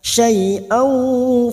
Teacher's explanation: fathah tanwin bertemu waw, idgham bi gunnah